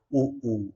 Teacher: ओष्ठ उ ऊ, यानी कि ओठ हमारे जो है ओठ जो है गोल होते हैं